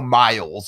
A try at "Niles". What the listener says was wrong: Niles, Niles, you said Miles,